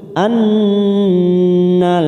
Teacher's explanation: Nun yang bertasdid bacaan gunnah musaddadah, kita tekan 3 ketuk